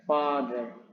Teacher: Nah, selanjutnya simbol ini pengucapannya yakni A. Jadi dibaca seperti A, kemudian agak panjang sedikit, ya. Contoh pada katanya father, ya, father.